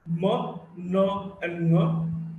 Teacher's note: Sound was coming through the mouth cavity and the nasal cavity was closed. And now the nasal cavity is open and the mouth cavity is closed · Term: nasals